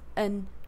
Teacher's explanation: She starts with a weak form of and, yeah, which sounds as an, yeah, and losing the D. So it's an, rather than and, yeah.